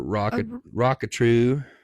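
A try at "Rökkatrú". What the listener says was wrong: You got to roll your Rs.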